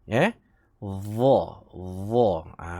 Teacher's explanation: hujung lidah dikeluarkan sedikit melepasi gigi. Dha. Bukan yang biasa kita sebut za. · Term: huruf dha